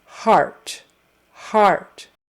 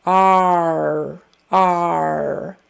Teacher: And the AR sound is, you're going to start with the ah vowel, ah, which is kind of a short O sound, ah, and then your tongue moves back and up for the R.